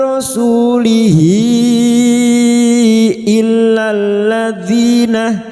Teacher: Ha damir yang berharakat panjang dan bertemu hamzah. Mad sila thwila. · Sekarang di sini kita wasal atau terus, maka rasulihi hadhamir yang berharakat panjang dan bertemu hamzah pada saat dibaca wasal, hadhamir yang berharakat panjang dan bertemu hamzah mad silat tawilah. Mad silat tawilah 5 harokat kita panjangkan.